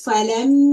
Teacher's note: meme has a shadda. That's why I'm holding the sound in my nose for 2 counts. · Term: gunna